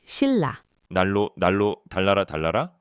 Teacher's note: The ancient Korean kingdom Schillah, it's written as shinla, but because n is next to l, both become l, the l sound.